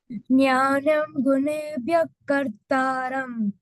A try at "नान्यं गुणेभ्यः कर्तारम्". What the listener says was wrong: It is not jnanam, it is nanyam.